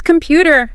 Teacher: Second syllable. Feel that little push.